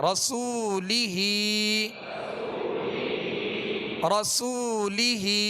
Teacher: لہٰذا اس کو کھینچیں گے، ہا کے نیچے کھڑا زیر ہے، ہا کو بھی ایک الف کی مقدار یعنی 2 حرکت کے برابر کھینچ کر ادا کریں گے